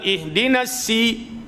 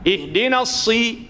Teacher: Ada sin, ada ham, sad pun ada hams. Cumanya sin bersifat dengan istifal, sad bersifat dengan isti'la, tebal. · Sin dia nipis, sad dia tebal.